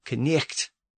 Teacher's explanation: you had to start at the back of the throat with the K sound, then immediately shift forward to get to the N sound. And the vowel I was pronounced E at the time, so it was a front vowel pronounced in the front of the mouth.